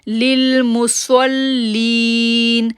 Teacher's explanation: صاد کو لام کے ساتھ جوڑیں گے، تشدید ہے، تھوڑی دیر ٹھہریں گے اور پھر لین کو کھینچیں گے کیونکہ یا ساکن سے پہلے زیر ہے.